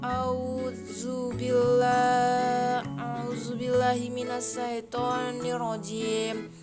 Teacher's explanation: Dua huruf ikham bilahuna terdiri atas huruf lam dan ro. Hukum membacanya adalah dengan dileburkan tanpa diiringi dengan bunyi dengung.